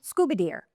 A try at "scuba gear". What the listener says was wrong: Scuba gear? You said scuba deer.